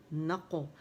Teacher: نہ باریک ہے, قو موٹی ہے تو نقو نقو, اور یہاں قلقلہ ہوگا موٹا والا.